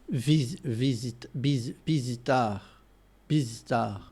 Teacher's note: Spanish doesn't really have a V sound. It does have the soft B, which kind of sounds similar to a V, but Portuguese has a distinct V sound.